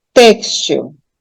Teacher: tá textil novamente uma paroxítona terminada em L então eu assento eu acentuo a penúltima sílaba porque ela é tônica